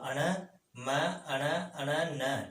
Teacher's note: अण, फिर म, अण अण और न, इनका उच्चारण नासिका के द्वारा होता है।